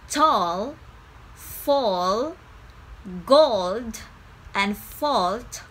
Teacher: Always check the sound before the L. If it's one of the back vowel sound, like in the words tall, fall, gold, and fault, pronounce the darkest L possible. The thing is, when you make the back vowel, your tongue is already pulled back, so it's easier to make the dark L.